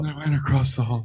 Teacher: she's very breathy with her speech